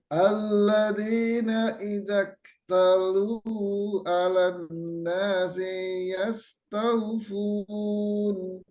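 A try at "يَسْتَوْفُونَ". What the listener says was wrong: Sinya dipendekkan, Pak.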